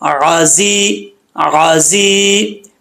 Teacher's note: یہ دونوں زا ان کے اندر سیٹی ہے ، ٹھیک ہے، بغیر سیٹی والے نہیں ہیں، غازی، غازی، زر